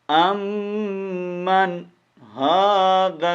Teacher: امن، ہاذا نون کا اظہار ہوگا، نون کو یعنی واضح کرنا ہے، ایک غنہ نہیں کرنا، اخفا نہیں کرنا. ٹھیک ہے، یہ مطلب ہے، کیونکہ نون ساکن کے بعد حروف ہلکی آ گیا ہے.